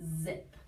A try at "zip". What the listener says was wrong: Oh, your tongue was definitely in the right spot and your S sounded good, but we're looking for zip. So turn your voice on.